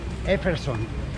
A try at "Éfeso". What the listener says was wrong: Éfeso. No, Éfeso. No, Éfeso. Sin N al final.